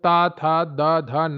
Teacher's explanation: जब ता, था, दा, धा, ना आप बोलते हैं तो आपकी जीभ दांतों से स्पर्श करती है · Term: ता वर्ग